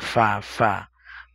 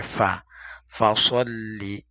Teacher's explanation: ফা হচ্ছে উপরের দুইটা দাঁত নিচের ঠোঁটের পেটের সাথে লেগে আসবে